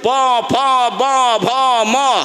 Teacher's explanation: মানে হলো ব আর ম দুটোই দুই ঠোঁট থেকে উচ্চারণ হয়। · যারা ব্যাকরণবিদ তারা বলবেন যে এই সমস্ত অক্ষরগুলো দুই ঠোঁট থেকে উচ্চারণ হয়, এই জন্য একে দুই ঠোঁট থেকে উচ্চারণ হয় বলে এই অক্ষরগুলোকে এক লাইনে লেখা আছে।